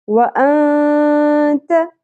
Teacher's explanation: یہاں پہ نون ساکن کی آواز کو ہم چھپائیں گے بھی اور غنہ بھی کریں گے، اخفا مع الغنہ.